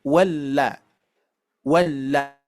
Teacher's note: karena huruf lam ini mempunyai sifat tawasut sedikit mengalir